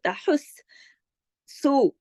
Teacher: یہاں پہ سین پہ تشدید ہونے کی وجہ سے تحس سو سین کو 2 مرتبہ پڑھا